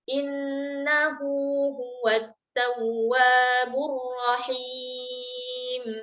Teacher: tempo bacaannya 2 harokat ketika wasal, tapi kalau kita wakaf di ha dhamir maka tidak berlaku mad. Ya, tidak ada mad, maka kita akan wakaf dia sebagai ha sukun. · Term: mad silah sughra